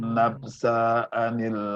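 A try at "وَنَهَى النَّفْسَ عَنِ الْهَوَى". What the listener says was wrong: Jangan nafsa, tapi nafsa'anil langsung harus gitu. Kalau ada bunyi a, i, u itu yang terpisah spasi harus cepetin. Nafsa'anil hawa gitu.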